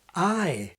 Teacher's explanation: For example the vowel of the word PRICE in modern SSB begins quite far back in the mouth, ɑj. But the King actually pronounces it like the familiar symbol aɪ, beginning with a more front quality